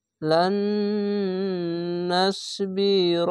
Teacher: এটি হচ্ছে ঈদগামে বা গুন্না, গুন্না করে পড়তে হবে, টেনে টেনে পড়তে হবে।